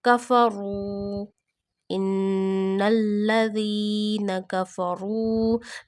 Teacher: Before Waw Sakina, Pesh come, Zamma come at the previous letter. Then you stretch Waw up to one finger, one alif. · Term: Waw Madda